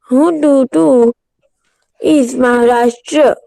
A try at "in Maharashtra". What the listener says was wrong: in Maharashtra. Beta, how can you read is? There is no S. It is IN.